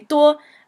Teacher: And the reason it sounds so weird, like 多, is because it's first tone. So first tone is a sort of flat, high tone. 多. So you can see I'm kind of speaking down here at this level, but when I say 多, I hop up a little bit.